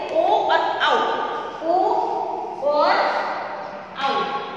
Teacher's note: ये है आपके कंठोष्ठ वर्ण, यानी कि कंठ और ओष्ठ दोनों की हेल्प से बोले जाते हैं